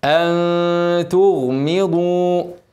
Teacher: نون ساكنه بعدها تاء اخفاء حقيقي والغنه مرققه عشان حرف التاء حرف مرقق